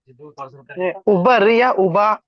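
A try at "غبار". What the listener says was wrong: गुबार, गुबार। गैन से गुबार।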